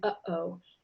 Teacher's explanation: We call it a glottal stop because the air comes up out of your lungs into your throat to your glottis, and it stops.